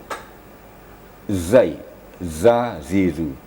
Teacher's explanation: Sedangkan zai semua gigi dirapatkan dan dipertemukan dengan ujung lidah. Kemudian ada penekanan sedikit sehingga keluarlah suara zai, sifatnya safir atau agak keras ya.